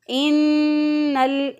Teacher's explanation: एक अलिफ के बराबर गुन्ना की आवाज़, नाक का जो नून का गुन्ना है